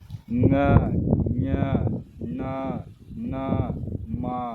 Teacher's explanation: ಮೂಗಿನ ಸಹಾಯದಿಂದ ಉಚ್ಚರಿಸಲಾಗುವ ವ್ಯಂಜನಗಳನ್ನು ಅನುನಾಸಿಕ ಅಕ್ಷರಗಳು ಅಂತ ಕರಿತೀವಿ. ಮೂಗಿನ ಸಹಾಯದಿಂದ ಉಚ್ಚಾರಣೆಯನ್ನು ಮಾಡುವಂಥದ್ದು.